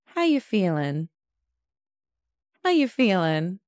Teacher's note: I'm still asking a question, so it's going to go up a little bit at the end.